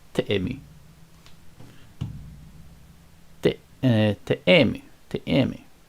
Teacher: and the stress will probably be on the E, this one, nasal E, so teemi.